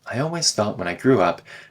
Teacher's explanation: the T in thought gets turned into a glottal stop